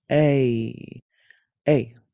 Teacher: Begin with eh and move your mouth to ee. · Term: long a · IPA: /ei/